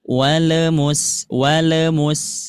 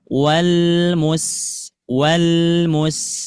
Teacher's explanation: catatannya untuk qamariah jangan sampai lamnya terbawa mantul